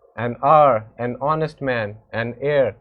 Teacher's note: the word hour, honest, heir begin with a vowel sound as the initial consonant h is not pronounced